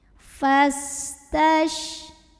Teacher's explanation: Huruf sin punya sifat yang tidak memiliki lawan, namanya sofir. Berarti ada desis seperti suara ular.